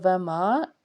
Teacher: الف سے پیچھے زبر ایک الف کے برابر کھینچنا ہے